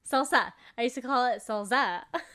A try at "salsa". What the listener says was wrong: There's no Z.